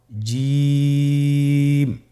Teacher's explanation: এর মাখরাজ হলো জিহ্বার মধ্যখান তার বরাবর উপরের তালুর সঙ্গে লাগিয়ে উচ্চারিত হয় আপনারা পিকচারে ছবিতে দেখতে পাচ্ছেন যে জিহ্বার মধ্যখান তার বরাবর উপরে তালের সঙ্গে লাগিয়ে উচ্চারণ করতে হয়।